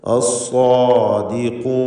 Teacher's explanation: ഖാഫ് അതിൻ്റെ മഖ്റജിൽ നിന്ന് വ്യക്തമാക്കി ഉച്ചരിക്കണം. നാവിൻ്റെ അങ്ങേയറ്റമാണ് അതിൻ്റെ മഖ്റജ്.